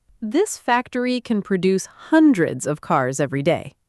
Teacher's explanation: >> We bought fresh produce at the market this morning. >> And produce, stress on the second part, is a verb meaning to make or create something